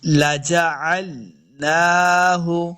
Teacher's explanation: نون کے اوپر کھڑی زبر ہے، اس کو دو حرکات لمبا کرنا ہے